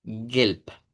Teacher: Es G-E abierta, luego terminamos pronunciando una L y una P.